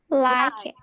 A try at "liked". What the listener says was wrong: Liked. Liked. It's t. You pronounce the sound t at the end.